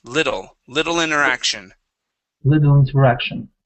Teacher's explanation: let's change that double T to a D sound.